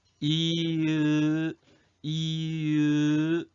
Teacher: 이가 으보다는 혀가 더 앞으로 가는 게 느껴질 거야. 으는 이보다는 혀가 더 뒤로 가고 이으 이으 혀가 이렇게 을을 발음할 때 혀가 더 당겨져가지고 뒤로 갈걸?